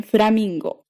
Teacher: This is an F formed with both of your lips coming towards each other.